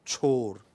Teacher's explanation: It is voiceless, palatal, aspirated, plosive.